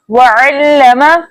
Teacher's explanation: वअल्लम, वाव के ऊपर जबर है, जबर को बगैर खींचे बगैर झटका दिए मुतवस्सित और मारूफ तरीके से पढ़ते हैं।